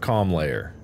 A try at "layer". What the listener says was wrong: It's one syllable. Layer. It's layer. It's not like layers.